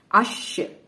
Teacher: شین پہ ہمس کی کوالٹی رہے گی، آواز جو ہے ختم تھوڑی کمزور ہو جائے گی اور ہوا جاری رہے گی